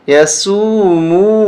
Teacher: سین کو کھینچیں گے ایک الف کے برابر، یہ حرف مدہ ہے